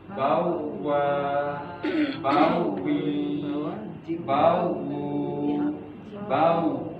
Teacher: Huruf waw adalah huruf bibir dengan cara memajukan bibir ke depan.